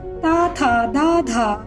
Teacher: जब आप इन्हें बोलेंगे तो आपकी जीभ दांतों से टकराएगी, अतः इन्हें दंत्य वर्ण कहा जाता है।